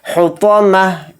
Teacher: تا کو ہا ساکن بنا کر پڑھیں گے، یعنی تا نہیں پڑھا جائے گا، پھر ہا پڑھا جائے گا